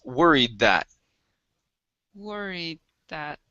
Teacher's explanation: mix the d and the th saying worried that but you do need to pronounce half of the d sound